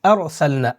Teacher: اس سبق میں را کو پر کر کے پڑھنا چاہیے